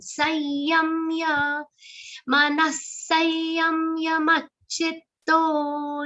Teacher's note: The anuswar, the dot on sa will be pronounced like ya. Nasal ya sound. Sayam ya. Manasayam yamachitto.